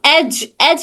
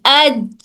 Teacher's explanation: के हिस्से से अदा होता है जीम जुबान का दरमियानी हिस्सा जुबान के दरमियानी हिस्से और दरमियानी तालु से अदा होता है